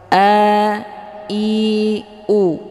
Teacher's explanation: hamzahnya keluar dari tenggorokan bagian bawah